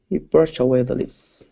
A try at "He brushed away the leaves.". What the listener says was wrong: Okay, give me a good T sound. So instead of brush away, it's brushed away. Brushed away.